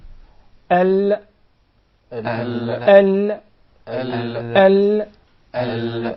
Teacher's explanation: we find the Lam, its pronunciation is easier from the right side of the tongue